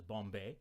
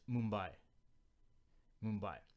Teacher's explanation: first consonant b versus m they're actually connected are both bilabial b is a bilabial stop and m is a bilabial nasal